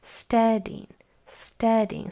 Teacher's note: said with a little more strength on that first part of the word